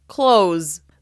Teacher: Even though the word contains the letter S, it actually sounds like the Z sound.